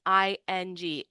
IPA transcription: ŋ